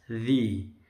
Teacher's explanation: Rabbikal ladzi, zi-nya panjang, ini zi bukan zi ya. Zi itu, zal itu lidahnya nempel di gigi atas